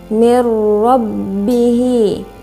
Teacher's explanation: Kemudian mir rabbihi, di situ ada idgham bila gunnah karena huruf nun sukun bertemu dengan huruf ro tasydid. Dibaca lebur tanpa dengung, bunyi tanwin hilang.